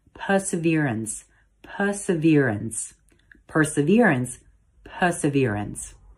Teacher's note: it's actually pronounced perseverance with emphasis on the v syllable perseverance if you prefer the british pronunciation as usual drop the r